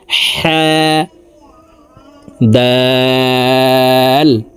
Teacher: হালুকের মধ্যখান থেকে উচ্চারণ হবে কারণ হার মাখরাজ হালুকের মধ্যখান থেকে হবে